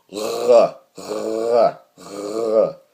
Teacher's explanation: uvular trill, which is a lot like the French R sound.